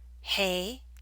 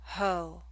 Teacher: in contrast when you say hey the a makes the front higher · It's the o in ho that makes the back of your tongue high.